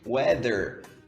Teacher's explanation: É um fonema que nós não temos em português, que é a ponta da língua entre os dentes, né? Assim, ó.